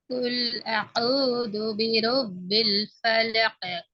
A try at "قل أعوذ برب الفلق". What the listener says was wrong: கொஞ்சம் காஃப கலக்கும். எஸ், காஃப கொஞ்சம் கலக்கும். அழுத்தமா வச்சு பலகு.